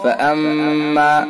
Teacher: میم حرف مشدد لہذا حرف غنہ ہوگا